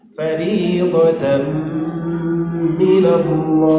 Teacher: lafzul jalalah didahului baris atas atau baris fathah kan dia dibaca tebal. Fariidatan minallah itu menjadi mad alif lisukun.